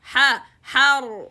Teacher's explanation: 1 and then ha fatha, 1 count, and the ra sukun will be heavy as well because it's sukun preceded by fatha